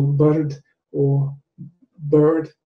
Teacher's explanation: whether the r is pronounced after a vowel or not